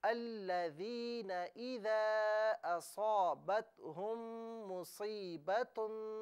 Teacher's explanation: अल्लज़ीना में जो नून है ना, इसे बगैर खींचे पढ़ें